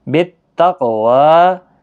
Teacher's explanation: قاف پر قلقلہ، آپ تشدید کا خاص خیال رکھیں اس میں۔